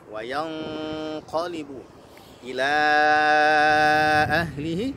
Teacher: Wa yanqalibu ada ikhfa ya. Di situ bunyi ikhfanya tebal ya, karena huruf nunnya bertemu dengan huruf tebal yaitu qaf.